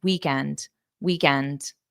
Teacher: just a very slight rise at the end